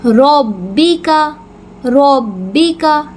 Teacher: رو اور با کو آپس میں ملائیں گے کیونکہ با مشدد آ گیا، اور جب ہم ملائیں گے تو ہم مضبوطی کے ساتھ پڑھیں گے، با کی آواز کلیئر پروناؤنس کریں گے.